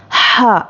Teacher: हा हुरूफ़े हलक़ी है, इसको हलक़ के बीच वाले हिस्से से अदा करते हैं, और इसको अदा करने में हवा बाहर निकलती है मुंह से। हा, इस तरह से।